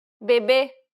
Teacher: the circumflex accent requires you to stress the syllable and to use a closed pronunciation